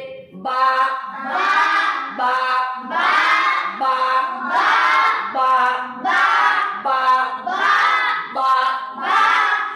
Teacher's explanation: ऊपर वाला होठ और नीचे वाला होठ जब आपस में मिलते हैं और जुदा होते हैं, यानी ऊपर के होठ की तरी यानी गीला वाला हिस्सा और नीचे के होठ की तरी यानी गीला वाला हिस्सा जब आपस में मिलते हैं और अलग होते हैं तो बा अदा होता है, जैसे बा बा बा बा बा बा बा बा बा बा। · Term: बा का मखरज